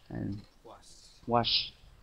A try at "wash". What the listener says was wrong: Nó vẫn còn hơi nhẹ ạ. Mình làm động tác như là mình đang đúng rồi ạ. Ở âm sau mình phát âm tương đối chính xác rồi ạ. Ok, anh cũng cố gắng là đọc mạnh hơn nữa, tạo âm mạnh hơn nữa.